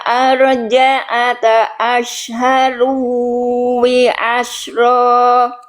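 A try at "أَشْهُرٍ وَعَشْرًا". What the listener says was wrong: Oke, ashharu wi ini salah semua harokatnya Bunda. Ashharu wi asyro. Ashharu wi. Ini ashhuriu.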